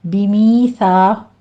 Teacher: بِمِیثَاقِہِم میں سا کو آپ نے سو نہیں پڑھنا، بِمیثا، سا کے اوپر چیٹی کی آواز نہیں آنی چاہیے، قاف کو پر پڑھنا ہے۔